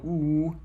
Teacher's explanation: Ooh, I round my lips. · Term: rounded vowel